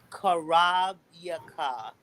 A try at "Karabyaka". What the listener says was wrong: You said it with a K. Remember, we want to pronounce the words exactly how we recite it. We want to make sure we say it and we pronounce it the correct way.